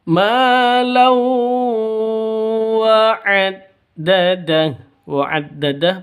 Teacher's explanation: Cara bacanya masuk ke wawu, siap-siap masuk ke wawu, ditambah didengungkan dua ketukan. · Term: idgham bi gunnah